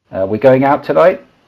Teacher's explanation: One little inflection, just like with the vocal fry, that I think is rather sad that's sweeping the world, is high-rising terminal, where every sentence ends as if it were a question